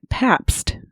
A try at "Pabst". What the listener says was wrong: You have to really pronounce the T.